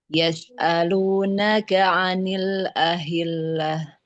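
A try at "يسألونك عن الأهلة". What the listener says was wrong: Coba sedikit diulang huruf sinnya jangan seperti shin, jangan yash.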